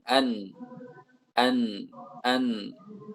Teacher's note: Jadi nun ini lebih sedikit memakai ujung lidah. Ujung lidahnya tidak sebanyak lam.